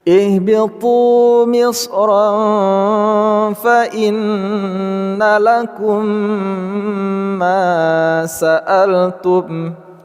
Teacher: 'Tu' terdiri dari dua harakat , 'ro' dengan tanwin bertemu dengan huruf 'fa' (ikhfa), 'nun' dengan tasdid menjadi ghunnah atau kita sengau, 'mim' sukun bertemu dengan 'mim' (idgham mimi ), dan 'ma' terdiri dari dua harakat.